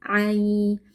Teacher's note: Ai di sini ada ya lin, kita baca ya-nya dengan lunak yaitu ya sukun sebelumnya fathah.